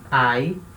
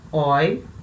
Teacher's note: eles são sempre decrescente isso quer dizer que eu sempre vou ter o som mais forte na primeira vogal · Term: ditongos